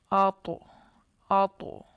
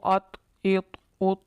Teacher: جیسے طا کا مخرج ہے زبان کی نوک اور اوپر کے دانتوں کی جڑ، تو جب ہم طا حروف قلقلہ میں سے ہے، اس پر جب ہم قلقلہ کریں گے ساکن حالت میں تو اوپر کی دانتوں کی جڑ کے ساتھ زبان کی نوک ٹکرائے گی اور وہاں پر ہمیں جنبش سی محسوس ہوگی۔ جیسے حمزہ طا زبر آتو آتو، آواز کو لوٹانا ہے، جنبش پیدا کرنی ہے جب حروف قلقلہ ساکن ہوں۔